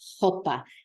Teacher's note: the sound of the H for the R, for the rolled R.